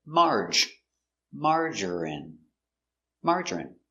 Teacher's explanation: three syllables stress on the first syllable